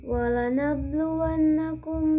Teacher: qalqalah sughra karena huruf ba sukun berada di tengah-tengah kalimat. Cara bacanya dengan dipantulkan ringan. Yang kedua ada gunnah karena nun harkat fathah bertasjid.